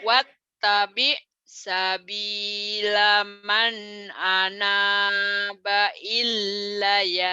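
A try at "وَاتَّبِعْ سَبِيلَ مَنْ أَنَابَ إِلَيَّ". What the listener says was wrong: bukan ilai kan berhenti wattabi' sabila man anaba ilai. Nggak ditekan, cuman latihannya ilai gitu latihannya. Ilai.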